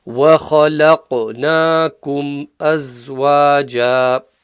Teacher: وَخَلَقَ. So here we've got the kha from the top of the throat, and then we've got the qaf with the bounce, qalqala.